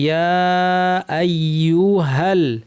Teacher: হা গিয়ে সরাসরি লামকে ধরবে